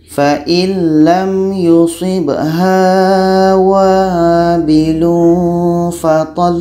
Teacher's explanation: Lam ini sifatnya tawassut, mengalirkan sedikit.